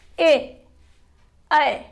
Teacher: और कंठ तालव्य, कंठ तालव्य में आप ए और ऐ का उच्चारण करके देख लीजिए। उसका ए, ऐ, नीचे का जो तालु है वहां पर जीवा का अग्रभाग स्पर्श करता है और कंठ पर दबाव पड़ता है।